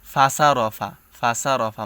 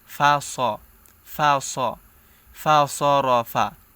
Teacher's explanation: মানে সদের উচ্চারণটা সিনের মতো করে ফেলি। যেমন সিন জবর সা হয়, তো ফাসা র এরকমভাবে উচ্চারণ করে অনেকে, কিন্তু ফাসা বলা যাবে না, বলতে হবে কি ফা স ফা স ফা স র ফা ফা স ফা স ফা স র ফা।